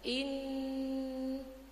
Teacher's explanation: Nun bertasdid itu namanya gunnah ya Bu ya. Jadi kan mendengung.